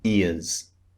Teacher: when the z sound is appropriate for example ears e-a-r-s ears the z sound is not so strong like it is at the beginning